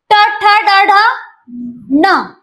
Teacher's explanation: जिभेचा शेंडा मुडपायचा आणि मुर्धेला लावायचा म्हणजे सेंटर टाळूला